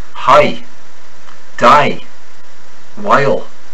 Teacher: the Irishman rises in pitch on stressed sounds so this long vowel with ascending pitch when emphasized hi die · the long eye starts with an intrusive o sound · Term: long I